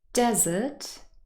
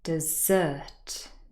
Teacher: in the first word desert the first syllable is stressed and in the second word dessert the second syllable is stress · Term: word stress